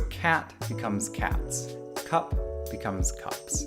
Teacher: if a sound ends in what we call a voiceless consonant, one where your vocal folds aren't vibrating, like P, T, or K, then the plural is simply pronounced S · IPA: /kæts/